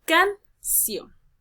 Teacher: Y voy a analizar dónde está cayendo la mayor entonación de voz. En este caso va a caer en la sílaba ción. Termina en N, por lo tanto debe llevar tilde obligatoria.